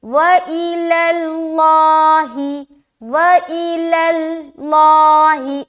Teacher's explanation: صرف اور صرف لفظ اللہ کا لام موٹا ہوگا، اس بات کو دماغ میں رکھے۔